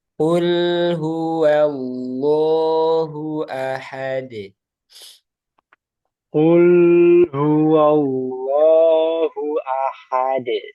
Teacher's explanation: di sini yang perlu hati-hati jangan sampai tebal lam sama wawu